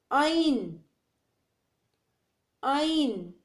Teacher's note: عین کو وسط حلق کے ساتھ ادا کرنا پڑتا ہے. حلق کا درمیان والا حصہ وسط حلق کہلاتا ہے.